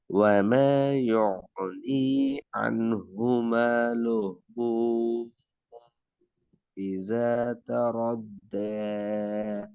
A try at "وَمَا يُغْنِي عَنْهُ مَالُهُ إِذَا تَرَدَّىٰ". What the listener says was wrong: மீன்ற sound தான் பிரச்சனை ரெண்டு மீனும் ஒரே டிசைனுக்கு வரல وما يغني عنه ماله إذا تردى என்றால் ஹாக்கு மேல மதியினுடைய அடையாளம் கொண்டிருக்குது